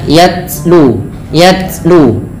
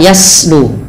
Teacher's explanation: Sifat huruf ta yang paling menonjol dalam ketika dia sukun adalah sifat syiddahnya, yaitu tertahannya suara. Dan langkah kedua yaitu adalah sifat hamsnya, mengalirnya nafas.